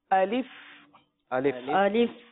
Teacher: الف کا مخرج ہے جوف دہن